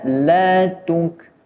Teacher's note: ketika mengucapkan huruf kaf berharokat sukun atau mati juga memiliki sifat hamas atau keluar sedikit nafas